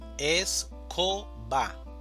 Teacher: El acento prosódico va a ser co, escoba o la mayor fuerza de voz.